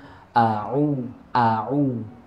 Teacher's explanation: kalau huruf Ain itu di tengah-tengah tenggorokan hai ketika melaporkan Aini yaitu seperti ada sedikit tekanan di tenggorokan · Nah, cuma bedanya huruf ain ini adanya di wastul halqi, di tengah-tengah tenggorokan